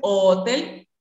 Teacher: si dicen hotel, articula en el velo del paladar